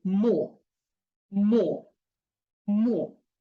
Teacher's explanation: the o should be the closed o